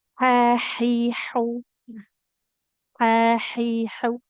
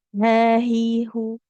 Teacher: Huruf ha. Nah, itu makhrajnya ada di tengah tenggorokan